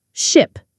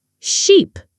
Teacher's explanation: Ship has a short sound, like in hit or sit. Sheep has a long sound, E, like in see or tree.